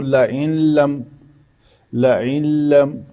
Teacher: اس کو کہتے ہیں ادغام کامل۔ اس نون کا مکمل طور پر اس لام میں ادغام ہو جائے گا۔